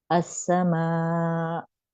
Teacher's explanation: अस्समा, आवाज निकलते निकलते फौरन रोक दिया आपने, और हम ऐसे नहीं पढ़ते हैं, हम जब स्टॉप करते हैं तो हम ऐसे पढ़ते हैं अस्समा, यानी हमने एंड किया है अलिफ मद पे, हमजा पे नहीं किया है। हमजा पे जब भी हमजा पे सुकून होगा तो एक झटके सी की आवाज आती है, अस्समा, मेरी आवाज रुक गई फौरन ना, फौरन रोकें अपनी आवाज को तो खुद ब खुद हमजा की साउंड निकलेगी।